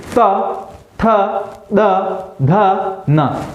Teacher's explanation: जो जीभ है वो बिल्कुल दांतों के बीचों बीच, दांतों के एक तरफ टच हो रही है बिल्कुल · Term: दंत्य व्यंजन